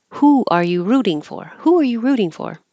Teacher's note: not a yes no question if the answer is a real word then it goes down